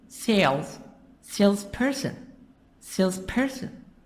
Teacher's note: the stress is in the beginning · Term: syllable stress